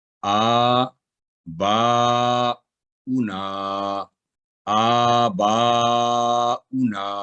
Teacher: ایسے الفاظ میں صرف حمزہ کی حرکت کو ہی ادا کیا جاتا ہے اور واو کو بالکل نظر انداز کیا جاتا ہے